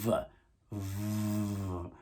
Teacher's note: Your upper row of teeth is making contact with your lower lip, right? But it's allowing air to pass rather freely